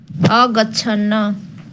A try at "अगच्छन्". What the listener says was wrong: अगच्छन, न नहीं बोलेंगे, पूरा न नहीं है,